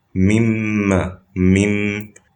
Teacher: So we're combining the noon into the meme, becoming mim mushaddada. As for the gunna, there's supposed to be a gunna, because the meme has gunna itself. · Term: complete idgham